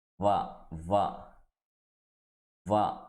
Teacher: కింది పెదానికి పై పళ్ళు వచ్చేసి టచ్ చేస్తేనే వా అనేటువంటి లెటర్ వస్తుంది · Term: దంతోస్ట్